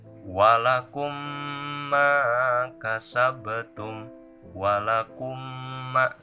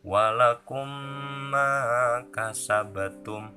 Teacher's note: Maka membacanya harus dimasukkan makhraj mim mati pada mim hidup. Jadi dimasukkan si mim matinya ke mim hidup seakan-akan diidgamkan. · apabila ada mim mati menghadapi mim lagi, maka membacanya harus dimasukkan si makhraj mim mati ini kepada mim hidup. Dan ini hukumnya disebut idgham mislen atau idgham mimi. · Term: idgam mimi